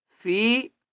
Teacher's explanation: فا کو ایک الف کی مقدار کھینچ کر پڑھیں گے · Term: مدہ